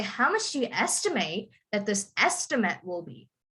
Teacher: the first part is a verb so you would emphasize the end